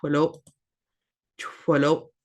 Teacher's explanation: Got the ch sound, and the X raised W is that blowing sound.